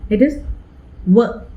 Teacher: My lips started from the position of a vowel U. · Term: semi-vowel